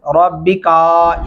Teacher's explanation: रा को मोटा और पुर करके पढ़ेंगे